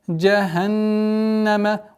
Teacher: Удержание назализации нун в размере двух огласовок.